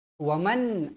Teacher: Nun yang bertanda mati bertemu dengan huruf hamzah hukumnya Hal jadi wajib dibaca dengan jelas dan terang